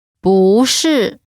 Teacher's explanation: When 不 is followed by a fourth tone, its tone changes from the fourth tone to the second tone.